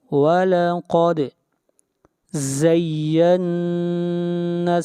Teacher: قاف کو موٹا پڑھیں گے، دال کے اوپر قلقلہ کریں گے